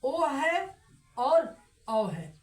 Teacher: कंठ ओष्ठ स्वर, जो कंठ और ओष्ठ दोनों से निर्मित स्वर है